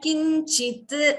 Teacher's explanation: Similarly, here kinchit, again you're hearing the t twice instead of kinchit. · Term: dvitvam